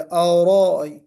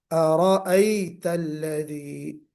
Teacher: اور پھر بہنوں نے سنایا، ارائیتا میں آپ نے منہ کو تھوڑا سا گول کر دیا، اورائی، تو ہمیں را کو پر کرنا ہے لیکن اپنے ہونٹوں کو گول کر کے نہیں، واؤ کی طرح نہیں پڑھنا ہے، پیش کی طرح نہیں پڑھنا ہے۔